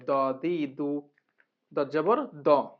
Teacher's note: বাম পাশের মাড়ির দাঁতের গোড়া থেকে মোটাভাবে আদায় হবে